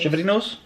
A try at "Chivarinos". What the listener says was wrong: No, not shiver. Chivarinos.